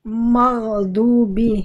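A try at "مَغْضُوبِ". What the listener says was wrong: Mnya jadi tipis dulu. Jangan. Jadi jangan udah udah tebal duluan. Udah udah kaku duluan minya.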